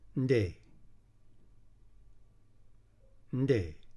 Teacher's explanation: So to make that clear to a reader, we use a D to signal that the nasal sound is stopped before the A.